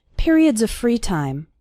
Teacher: the word of runs into the word free